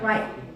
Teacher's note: So the T sound is not aspirated in the end of the word. So like, you expect it to sound like right, but actually when we speak, the T at the end of the word is never pronounced. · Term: ending T